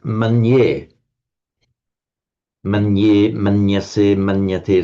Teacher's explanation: The theoretical difference is that Sanskrit regards it as a consonant cluster, a n followed by a consonantal y, and it regards it two two two consonants.